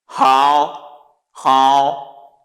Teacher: it has the third tone descending then ascending